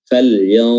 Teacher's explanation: Nun matinya tidak dibaca lagi, namun posisi lidah telah berada pada makhraj huruf dha dan disertai dengan gunnah, yang suara hidung. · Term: ikhfa hakiki